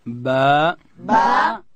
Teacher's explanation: دا به د دواړو شونډانو د مشلیدو څخه ادا کوو، د لندې حصې څخه. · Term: حرف با